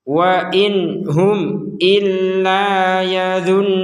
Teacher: Nun Nun bertasdid dibaca dengan dengungan